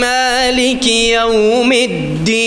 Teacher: Ini dimaksud dengan al-idgham al-kabir. Jadi idgham kabir itu ada dua huruf yang sama, mim sama mim walaupun berharokat. Nah, yang satunya diidghamkan, dimasukkan ke yang setelahnya.